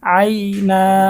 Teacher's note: দুই জবরের পরে ওফ করলে এক আলিফটা নিয়ে পড়িতে হয় তাকে মধ্যে আওয়াজ বলে